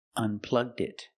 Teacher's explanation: Link the D with the next word, it.